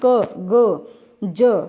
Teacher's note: ये ऐसे वर्ण हैं जिसमें बिल्कुल आपकी हवा कम यूज़ हो रही है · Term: अल्प प्राण